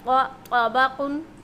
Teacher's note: त्वा को एक तो मोटी साउंड के साथ पढ़ेंगे, मोटी आवाज़ के साथ यानी भारी आवाज़ के साथ